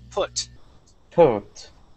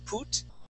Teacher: let's practice the short you sound here you had said put using an oo sound